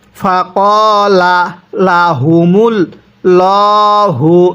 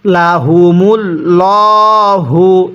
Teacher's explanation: এই আল্লাহ শব্দের যে মাঝখানে লামটি আছে, এই লামের পূর্বে যদি পেশ থাকে তাহলে আল্লাহ শব্দটিকে মোটা করে পড়তে হবে।